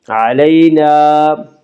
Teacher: یالین کو نرم آواز کے ساتھ جلدی پڑھیں گے۔ علینا، تو وقف مطلق کی علامت ہے، اس پہ ٹھہرنا چاہیے۔